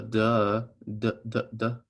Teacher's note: these two letters are made the exact same way except that d has your vocal chords involved